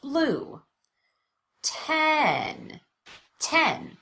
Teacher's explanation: That makes sense. The vowel is louder and longer, and there's an obvious change in pitch. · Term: primary stress